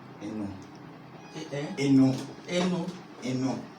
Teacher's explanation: So Eno, it will be E-N-O. But then the O needs a nasalization. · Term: nasal accent